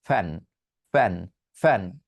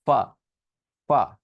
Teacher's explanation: উপরের দাঁত, নিচের ঠোঁট, উপরের সারির দাঁত, নিচের ঠোঁট, এই দুটোকে টাচ করে তারপর ফ উচ্চারণ করতে হয়।